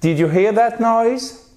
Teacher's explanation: On fait remonter l'intonation puisque c'est une question à laquelle on peut répondre par oui ou par non